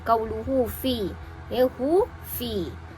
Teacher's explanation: Ini bacaannya adalah menurut Imam Al-Jazari dan Asy-Syatibi wajib dibaca dengan kadar 2 harakat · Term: mad silah qasirah